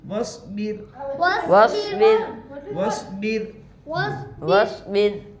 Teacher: रॉय साकिना से पहले जेर इसलिए रॉय साकिना बारीक होगी